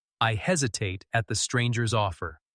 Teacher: let hesitate stretch, your voice trembling on the first syllable.